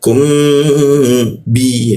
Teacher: mim mati bertemu ba maka digumamkan ya gumamnya itu ditahan dua ketukan di mim